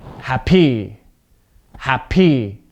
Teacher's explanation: you can hear how my voice changes how my voice goes up at the second part of the word